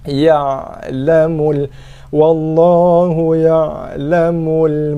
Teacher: Ain sifat dia tawasud, longgar sikit, tak ketat sangat, tak keras sangat.